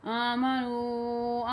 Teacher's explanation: آمنو نون وا مد پیش نو، اسے کھینچ کے پڑھیں گے آپ۔ نون وا مد پیش نو کو 3 کھڑے حرکات جو ہوتے ہیں ان کے برابر آپ نے کھینچنا ہے